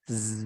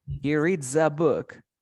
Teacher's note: La S ahora se pronuncia como si fuera una Z, como la abejita.